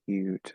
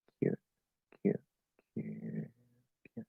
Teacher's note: like a schwa with a little bit of lip rounding